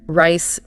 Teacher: The R in rice is usually soft. The tongue curls back a bit but doesn't tap anything.